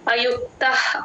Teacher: నైష్ఠికీం శాంతిమా నైష్ఠికి అయుక్తః కామకారేణ అయుక్తః అయుక్త పక్కన విసర్గ H sound క ముందు ఎప్పుడు విసర్గ వచ్చినా హెచ్ సౌండ్ పెట్టుకుంటాం ఆ విసర్గని స్ట్రైక్ చేసి హెచ్ అని రాసుకోండి అయుక్తః అలా గాలి బయటికి